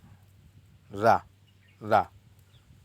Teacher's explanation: रा लुंठित जिसके आधार में जिसके उच्चारण में जीभ तालु से लुढ़क कर स्पर्श करे।